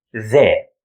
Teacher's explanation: it represents the voiced English th sound